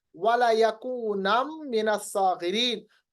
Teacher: यकूनन था असल में, मगर दो जबर को मीम के साथ मिलाएंगे। तजवीद का कायदा है इदगाम बगुन्ना का।